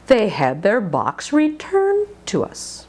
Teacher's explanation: us now box is a Content word and so is returned returned is the last one so it's the one that's longer and higher in Pitch